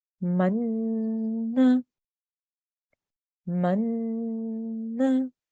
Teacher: I'm holding on that nasal sound for about 2 seconds or 2 counts. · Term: Nun Gunna